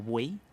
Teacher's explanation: La Y, esa que la conocemos, en posición final de sílaba equivale a la vocal I